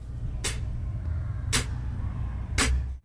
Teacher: So what we're going to think about with this inward hi-hat sound is we're going to think about our top teeth touching our tongue, and then we're going to think about a short quick breath inward to produce that sound like a hi-hat.